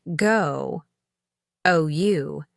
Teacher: The long O in go, OU, involves rounding the lips and positioning the tongue slightly towards the back of the mouth